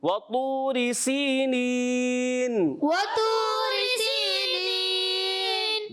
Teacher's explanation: سین جو ہے سیٹی کے ساتھ ادا کریں گے